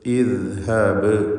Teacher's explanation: ബാഇൻ്റെ സുക്കൂൻ ഖൽഖല സൂറ നൽകി ശബ്ദം ഹറക്കത്ത് പോലെ ചലിപ്പിക്കണം. ഈ ഹംസക്ക് കസ്റാണുള്ളത്.